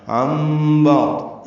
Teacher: نون ساکن کے بعد با آنے کی وجہ سے نون کی جگہ میم پڑھ رہے ہیں، یہ اقلاب ہے یا ابدال اس سے کہتے ہیں.